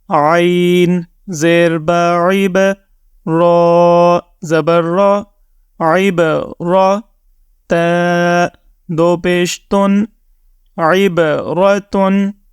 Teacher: اس word میں آپ دیکھیں کہ با کے اوپر جزم ہے، تو با حروف قلقلہ میں شامل ہے، تو یہاں پر آپ نے قلقلہ کرنا ہے۔ را کے اوپر زبر ہے، تو اس را کو آپ نے بھاری یا موٹی آواز میں ریڈ کرنا ہے۔